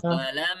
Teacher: Yang lebih boleh panjang adalah mimnya. Yang boleh ditekan itu mimnya, bukan alifnya. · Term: Gunnah musyaddadah